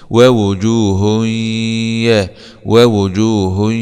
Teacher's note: هاء ضمتين مع الادغام بغنه في الياء المفتوحه لان الياء من حروف كلمه ينمو ووجوه يا ووجوه ووجوه يا